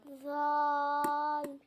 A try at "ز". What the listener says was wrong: زا. اس کو نرمی سے نہیں پڑھنا, زا نہیں پڑھنا, سختی سے پڑھنا ہے.